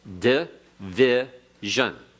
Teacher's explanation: the di is a short schwa type of pronunciation. It's an unaccented syllable, so it loses its emphasis, and we pronounce it as short, but we in English divide that as a syllable, but not so in Hebrew.